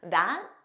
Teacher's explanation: It was more of a that. So you just don't press out that final T